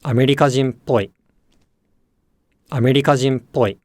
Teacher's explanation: When words combine with ぽい, then the pitch starts low, rises, and stays high through the ぽ with the e attaching low. Thus, if the previous word has an accent, as in アメリカ人, then this accent will shift forward to the ぽ